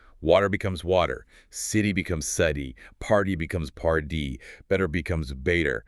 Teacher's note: your tongue just quickly flaps or taps against the alveolar ridge, that bumpy spot right behind your upper front teeth. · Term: flap T